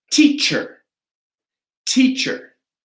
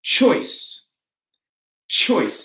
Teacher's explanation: that ch is going to sound with our lips open, our teeth together, and our tongue at the front of our mouth